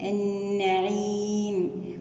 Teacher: يومئذ، يومئذ عن النعيم، نتم حركة الكسرة في النون عننا، ونأتي بغنة النون المشددة النعيم، ونقف عليها بمد عارض للسكون